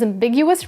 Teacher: The stress is on the second syllable, big, which you can remember since something that's ambiguous can lead to big misunderstandings.